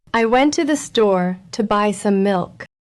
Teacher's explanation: The stressed words are went, store, buy, milk. The unstressed words are I, to, the, to, some. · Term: stress content words